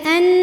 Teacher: Kemudian an, nunnya gunnah musyaddadah karena nun bertasydid. Cara bacanya dengung, tahan dengungannya kurang lebih 2 harokat.